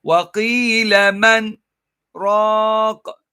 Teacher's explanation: you stop the sound but keep the same breath. So it sounds as if you are completely stopping, but you're not. And you're supposed to continue.